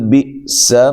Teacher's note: سین کو باریک سیٹی سے